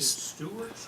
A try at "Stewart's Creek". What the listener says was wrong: It's Stewart's Creek. I think it's Stewart's Creek. Yeah. It's got an S on it.